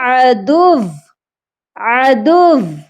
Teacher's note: واو مشدد ہے، اور جب ہم وقف کریں گے تو واو کو بھی پڑھیں گے، وہ بھی سختی کے ساتھ